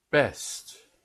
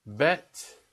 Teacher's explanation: the B are the lips together and they're pushed out